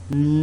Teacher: in N, there is no airflow through the mouth. Why? Because this is a nasal sound. But there is still airflow through the nose.